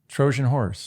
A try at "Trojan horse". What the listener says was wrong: You say Trojan horse. Trojan horse. Trojan horse. I think you need a D in there. Trojan horse. If this were IPA, you would put a D in there.